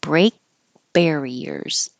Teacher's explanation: the K here you won't hear it because you hold your tongue in the K position